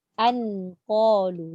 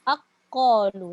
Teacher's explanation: Kalau dia idgham, dia buang terus bunyi nun, tak ada bunyi langsung. Dia bunyi terus qaf.